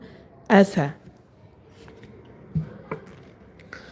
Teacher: হামজা হলকের শুরু থেকে স্পষ্ট হবে। হ্যা এক নাম্বার মাখরাজ থেকে উচ্চারণ হবে।